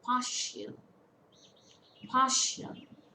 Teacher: it's a two syllable word stress falls on the first syllable